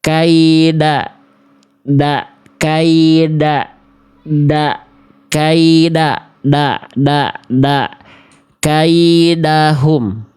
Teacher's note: Yang C itu kayak huruf D ya, ujung lidahnya ke langit-langit terlalu ke dalam. Harusnya ke pangkal gigi atas.